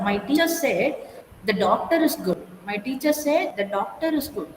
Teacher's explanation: So you have to stress on a particular word, doctor.